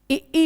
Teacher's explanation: ई होते हैं तालव्य, जो तालु से उच्चारित होते हैं, ई, छोटी ई और बड़ी ई, ये होते हैं तालव्य स्वर।